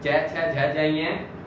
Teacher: इन सब का उच्चारण स्थान हमारा होगा तालु